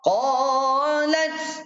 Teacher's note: qaf berada di atas, pangkal lidah tolak ke dalam bunyinya, mulut terbuka. Qa bunyi sini, mulut kosong.